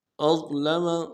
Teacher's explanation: ضا کو موٹا کریں گے، ضاد کے مخرج سے ادا نہیں کریں گے، ضا. أظلم جیسے طا پڑھتے ہیں اس کو موٹا کریں گے ضا کو.